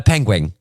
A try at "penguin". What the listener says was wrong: Penguin. No, there's no wing. No wing. There's no wing. There's no g on the end.